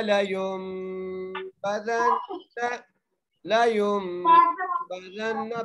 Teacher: نون کے اوپر تشدید ہے اس لیے ہم نون مشدد پہ غنہ کر رہے ہیں